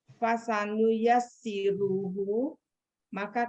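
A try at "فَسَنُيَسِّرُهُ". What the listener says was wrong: Hu-nya dipanjangin coba Bu.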